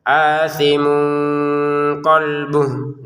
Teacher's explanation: A-nya dua harakat panjang. Untuk tanwin bertemu qf kita baca dengan samar ya.